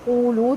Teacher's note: واو کو ہونٹ مکمل گول کر کے قولو دونوں کو 2 حرکت لمبا کریں گے